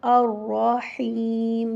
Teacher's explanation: الرحیم میں را کو پر پڑھیں گے، موٹا کر کے پڑھیں گے کیونکہ اس کے اوپر زبر ہے